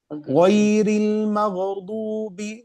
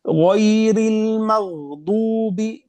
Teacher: harus kita tahan di huruf ghain dan huruf dad biar tidak ada qalqalah